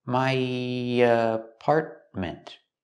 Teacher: When I link my to apartment, we have the y sound, just a little bit.